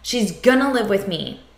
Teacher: a contraction, she is, and then the reduction of going to gonna